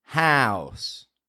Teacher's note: n bounce an or ow an right house ow how house there's no n there just ow